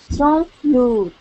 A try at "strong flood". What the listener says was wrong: Okay, so that word is pronounced flood. Strong flood. And when you say strong, I'm hearing strong, strong, and your tongue is vibrating.